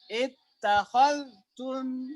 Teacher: kalau Hafs dia rokhawah dulu di zal. Khal. Kalau Warsh langsung idgham, lidahnya langsung ketak, zalnya dianggap tidak ada ya, sehingga menjadi tak bertasydid.